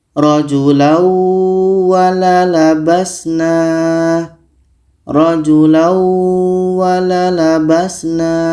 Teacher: tanwin ini kita masukkan ke wau dan kita dengungkan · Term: idgham bi gunnah